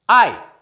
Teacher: यहां पर केवल एक वॉवल साउंड है जो कि डिप्थोंग है, ग्लाइड साउंड है। यहां पर number of consonant before and after the vowel is 0, means C0, VC0.